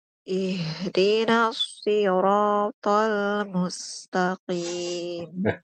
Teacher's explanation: suaranya tuh kepecah dua, Ibu. Ada yang dari mulut, ada yang dari hidung. Jadi, Ibu suaranya tuh sengau. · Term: suara sengau